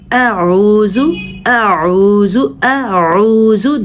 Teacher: اعوذ اس میں دو قسم کے ساؤنڈ ہیں، پہلا نرم اور دوسرا سخت حلق سے۔ اعوذ اعوذ اعوذ دونوں کی الگ الگ ساؤنڈ ہیں، اس لیے آپ نے اس کو ادا کرتے ہوئے دھیان رکھنا ہے۔